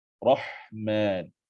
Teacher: ha pedas, sukun, juga ada desiran angin